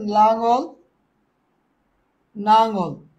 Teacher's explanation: এখানে সেম দুইটা ল ছিল একটা ন হয়ে গেছে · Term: বিসমীভাবন